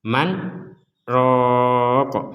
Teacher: Man Ro Jadi di sini ada huruf Sin disebut sebagai saktah cara membacanya adalah Man kemudian diam sejenak kemudian roah tapi tidak lama-lama